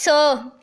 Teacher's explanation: ये जो स साउंड है ना ये वॉइसलेस होता है, इसमें आपको वाइब्रेशन फील नहीं होती। लेकिन जब आप स को ज बोलेंगे ना तब ये वॉइस्ड होगा।